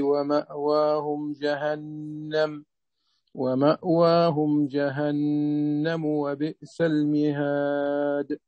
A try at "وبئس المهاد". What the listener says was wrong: وبئس المهاد، حقق الكسرة، وبئس المهاد.